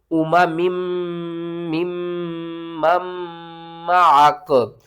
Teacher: तीनों मीम के ऊपर तशदीद है, तो हमने क्या करना है, तीनों के ऊपर ही गुन्ना करना है और दरमियान में सांस को नहीं तोड़ना।